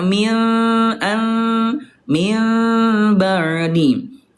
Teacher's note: berubah menjadi mim tapi disertai dengan dengung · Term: iqlab